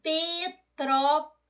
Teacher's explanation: Petrópolis a sílaba tônica é a antepenúltima ela é proparoxítona